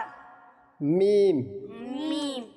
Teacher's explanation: দুই ঠোঁটের শুকনো অংশ থেকে